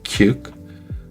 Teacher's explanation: Posez la main devant la bouche. Vous devez sentir un un jet d'air chaud quand vous dites k. Pas une prise légère, un vrai souffle. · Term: le cas aspiré